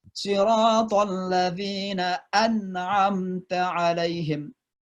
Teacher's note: maka nun mati itu dibaca jelas